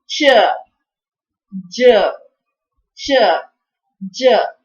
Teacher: So it is something like it has the quality of a plosive and it has the quality of a fricative. That means first it completely stops the air and slowly releases the air. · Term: palato-alveolar affricates